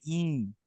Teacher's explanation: ই ধরলাম, এটা ই, যখন চন্দ্রবিন্দু থাকবে তখন ই হয়ে যাবে, ই, হালকা নেসাল সাউন্ড থাকবে, হ্যাঁ, নাক দিয়েও বেরোবে, মুখ দিয়েও বেরোবে, দুইটা দিয়ে বেরোবে